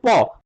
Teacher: অঘোষ বর্ণের ক্ষেত্রে দেখো অল্প প্রাণ বর্ণ হচ্ছে প, প উচ্চারণ করতে গেলে দেখো দুটো ঠোঁট একসঙ্গে হয়ে মানে তারপর খুলছে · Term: ওষ্ঠবর্ণ